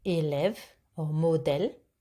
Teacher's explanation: It's a bit more open, like in get. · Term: accent grave